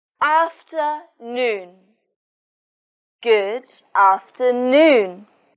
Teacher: In this word, the stress is on noon.